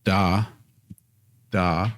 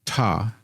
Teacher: So we've got da, da. We don't feel the puff of air. And then we go all the way across over there to ta, and we feel that puff of air. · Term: aspirated sound